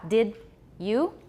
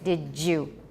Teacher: In the case of did you and don't you, it's also, in addition to palatalization, it's also affrication.